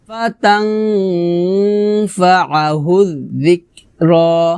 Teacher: আইন উচ্চারণ করতে হবে খলকের মাঝখান থেকে চাপ দিয়ে। ফাতাং ফাআহু যিকরা আহুজ হুজ পাতলা হবে।